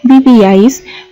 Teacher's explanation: Si nosotros pronunciamos la palabra vivíais, podemos notar que el acento está en la sílaba vi. Entonces no estamos acentuando en este caso la sílaba A.